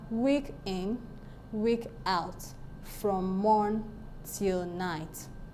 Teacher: stress syllable followed by an unstressed syllable